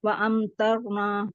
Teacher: हाँ, वाज़बर वा, हमज़ा ज़बर मीम साकिन अम, व अम तरना, यहाँ पर जो है हम इजहार शफी करेंगे, वाव ज़बर वा मुतहर्रिक है वाव, और हमज़ा के ऊपर हमज़ा के बाद मीम साकिन आ रहा है, तो यहाँ हम इस मीम की आवाज़ को जाहिर करके पढ़ेंगे।